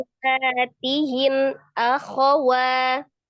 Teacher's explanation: Stabilkan matobinya di 2 harokat ya. Akhawa itu hanya pendek, wanya 2 harokat.